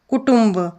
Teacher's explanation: कुटुंब या शब्दामध्ये टचा नाकातून उच्चार होतो म्हणून त्या टवर अनुस्वार दिलेला आहे।